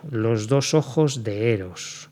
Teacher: no vamos a hacer sinalefa entre la preposición y heros